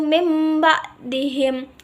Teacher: iqlab yaitu bunyi nun mati atau tanwin beralih menjadi Bunyi mim dengan syarat harus dengung apabila bertemu dengan huruf iqlab dan huruf iqlab hanya ada satu